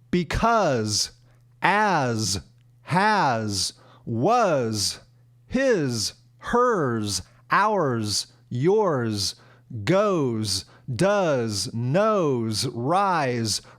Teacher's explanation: some other common words that end in an S but are pronounced like a Z.